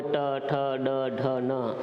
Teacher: इनका उच्चारण स्थान मूर्धा है, इनको हम मूर्धन्य वर्ण भी कहते हैं